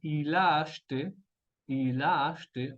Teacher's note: tenemos un enchaînement consonantique y después un enchaînement vocalique al mismo tiempo